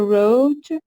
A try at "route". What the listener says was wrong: route or route, but not road. That is road. That's the pronunciation of road. This is T. Route or route, but not road.